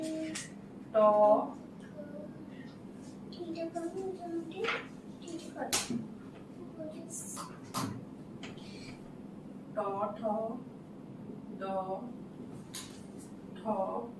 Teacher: এগুলি জিহ্বার অগ্রভাগকে উল্টাইয়া তালুর পশ্চাতের কঠিন অংশে মূর্ধা স্পর্শ করে। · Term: মূর্ধন্য